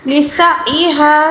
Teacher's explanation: سین کی سٹی اور عین کو حلق کے درمیانی حصے سے ادا کریں گے، اور عین کے اوپر جب بھی ساکن آ جائے اس کو ہلا کر نہیں پڑھتے، یہاں پر لوگ زیادہ تر اس کو ہلا کر پڑھتے ہیں، حالانکہ یہ غلط ہے۔